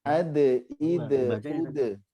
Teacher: Kolkolahnya tipis, jadi ke e, ya bukan ke o.